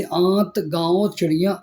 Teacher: नाक से बहुत कम सांस निकलती है और मुख से अधिक सांस निकलती है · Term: अनुनासिक